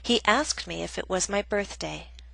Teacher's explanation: Example B is a reported question, a statement, so we have falling intonation, which means our voice goes down.